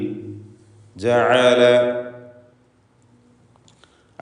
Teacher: തൊണ്ടയുടെ മധ്യത്തിൽ നിന്നും ഉത്ഭവിക്കുന്ന ഐൻ